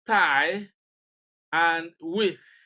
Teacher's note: the voiceless dental sound thigh, as in thigh, and with.